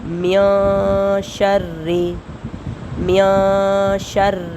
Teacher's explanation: را کو بریک پڑھیں گے کیونکہ را کے نیچے زیر آ رہی ہے،